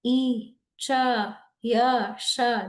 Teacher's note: And it sounds like e, cha, ya, sha. They come from the upper palate.